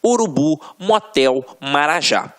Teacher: A última sílaba é a tônica. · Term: oxítonas